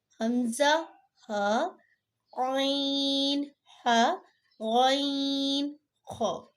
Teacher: حروف حلقی ہم اس لیے کہتے ہیں کہ یہ 6 حرف جو ہیں وہ حلق سے ادا ہوتے ہیں